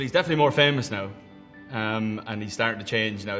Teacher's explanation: the final diphthong in words like now. The way he says it sounds more like an O sound.